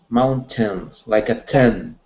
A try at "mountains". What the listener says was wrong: Yeah, don't actually, more like tin. Tin. Okay, so you're saying it like teens, but I mean 10. So more like the number 10.